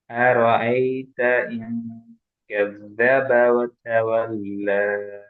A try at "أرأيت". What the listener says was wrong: أرأيت அந்த ஏட சவுண்ட் போதாதுண்ணா, கொஞ்சம் அதை பார்த்துக்கணும், அதான் அப்படிதான் பிரச்சனை.